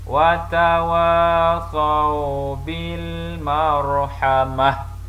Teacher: Okey, itulah dia pertukaran yang berlaku, iaitu apabila kita berhenti pada huruf ta begini di hujung perkataan, maka dia akan berubah menjadi huruf ha. Huruf ta tidak berfungsi pada waqaf atau pada berhenti, tetapi dia akan berfungsi atau berbunyi dengan huruf ta berbaris apabila dibaca sambung.